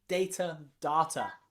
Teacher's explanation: You've got A as in data, and you've got R as in data. Both of them finish in that schwa sound.